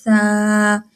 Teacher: زبان کی نوک وہی جو دانت ہے اوپر والے سامنے والے جو دو دانت ہیں ان کی کناروں سے لگ رہا ہے